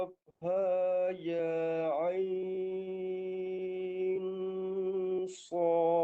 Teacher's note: Ikhfa tu dia ada dengung 2 harakat panjang. Dengungnya tu yang panjang 2 harakat.